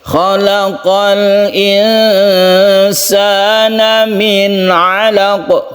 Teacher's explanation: Ketika kita berhenti kita sukun qaf, ini qalqalah kubra.